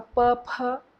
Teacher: P-ph, both are voiceless, but one is aspirated.